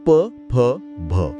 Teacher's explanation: दोन्ही ओठ एकमेकांवर आदळल्याशिवाय हे ध्वनी निर्माणच होऊ शकत नाहीत. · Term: ओष्ठय वर्णांचा